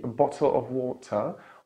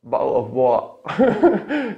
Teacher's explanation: they would either say the true T, a bottle of water, or they would say the glottal stop